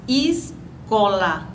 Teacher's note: fonema i não é a palavra escrita é escola com e na pronúncia geralmente a gente diz iscola com i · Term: neutralização